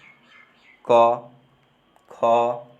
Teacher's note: ठीक है, जैसे क, ख, ये सब कंठ से बोला जा रहा है